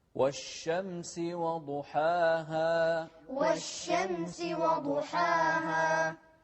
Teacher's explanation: نركز على الشين والشدة اللي عليها، والشين هو حرف التفشي